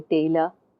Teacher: the same amount of time taken to say tay and uh